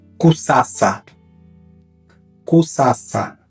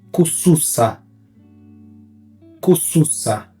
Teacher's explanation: Temos a letra S, que é C em Quimbundo, e ela é sempre S, nunca Z.